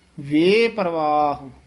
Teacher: ਵੇਪਰ ਰਾਰੇ ਤੋਂ ਨ ਤੋੜਨਾ ਹੈ ਵਵੇ ਤੋਂ ਡੈਸ਼ ਦੇ ਕੇ ਲਮਕਾ ਕੇ ਉਚਾਰਨ ਕਰਨਾ